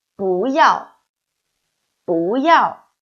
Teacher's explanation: then 不 should change fourth tone into second tone